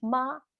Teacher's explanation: no tone, meaning it's a light sound at the end of it